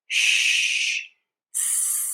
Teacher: SH is pronounced with your lips more forward and rounded.